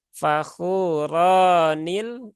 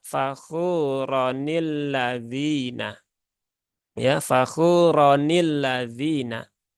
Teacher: dia tidak menjadi panjang tetapi rnya menjadi satu harakat